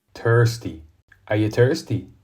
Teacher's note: voiceless th is normally pronounced T